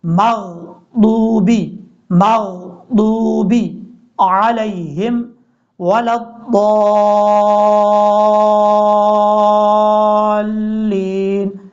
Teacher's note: اس میم کے بعد جو غین ہے اس میں قلقلہ نہیں کرنا آپ نے